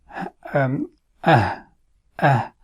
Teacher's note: So the vocal cord remains slightly open, but it is pronounced from the deepest part of the throat. As the sound is Ah, Ah, and the letter is Ha, okay?